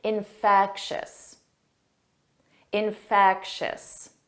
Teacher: the syllable stress is on the 2nd syllable.